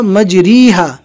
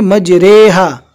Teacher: आप गलती से ये ना पढ़े मजरीहा, यहाँ पर रो को मजहूल पढ़ा जाएगा न कि मारूफ। मारूफ का तरीका मजरीहा, लेकिन यहाँ पर हमें पढ़ना है मजरेहा।